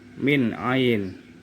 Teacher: Min di sini nun sukun bertemu dengan ain, dibaca jelas idhar.